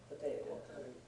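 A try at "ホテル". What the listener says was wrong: Hoteru? it's not a po. Hoteru.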